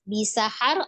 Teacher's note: ro-nya dibaca tebal karena sebelumnya adalah fathah, di huruf ha, ro-nya disukunkan ya.